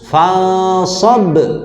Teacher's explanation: Qalqalahnya kubro. Ya, besar ya di akhir ayat, akhir kalimat.